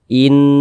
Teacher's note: jadi suaranya itu kita tahan kita panjangkan sejenak in di bagian innya kita tahan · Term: ghunah musyaddadah